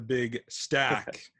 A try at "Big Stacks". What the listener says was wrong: It's not one single stack. It's with an X. Multiple stacks.